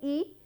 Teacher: E is of course close front vowel, but this is the tongue position from where E is uttered, that has been assumed, but in some languages it can be little here, it can be little here. · e is produced from the front part of our tongue and the mouth is almost closed